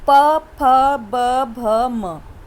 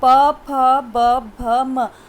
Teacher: हमारे दोनों होंठ एक दूसरे को क्या कर रहे हैं? स्पर्श कर रहे हैं।